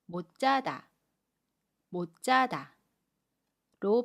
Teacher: 받침 시옷은 받침소리 디귿으로 발음하고 첫소리 지읒은 짜로 발음해요